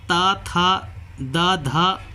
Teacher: जब आप बोलेंगे तो आप पाएंगे कि इसमें जीभ टच करती है दांत को धक्का देती है पुश करती आगे की र तो इसका सही आंसर जो होगा